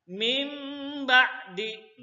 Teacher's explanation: Cara bacanya didengungkan dan nun mati ini berubah menjadi huruf mim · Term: iklab